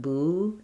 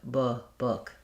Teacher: The tongue's a little lower in the back. The lips are not quite as pursed. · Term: lax vowel